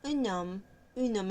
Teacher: Es un sonido suave, sutil, con unión, con donde unimos la n con la o porque la h es muda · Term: encadenamiento